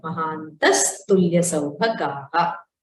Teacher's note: Mahantaha tulya saubhagaha. The visarga has become a sakara there.